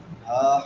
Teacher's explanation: ہا حلق کے آخری حصے سے